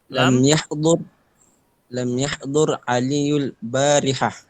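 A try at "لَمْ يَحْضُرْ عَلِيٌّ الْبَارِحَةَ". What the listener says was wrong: Oke, kalau tanwin ketemu alif lam maka dibacanya aliyunil barihata. Jadi tanwin itu adalah ibarah dari nun sukun.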